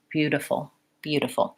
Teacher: So it's a light tapping up, and in English we use that d sound as a D or as a flap T.